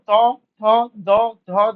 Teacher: আমাদের জীবটা আমাদের যে সামনের মাড়ির যে দাঁত গুলো মানে উপরের অংশের যে দাঁতগুলো আছে সেখানে স্পর্শ করবে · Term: দন্তন্য